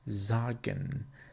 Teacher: If we use S at the beginning of a sentence, the letter has always the sound of a Z.